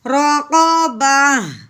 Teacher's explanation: آگے وقف رقبہ، ٹھیک ہے، آخر پہ ہم نے ہاں کی آواز تھوڑی سی نکالی ساکن کرتے ہوئے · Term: گول تا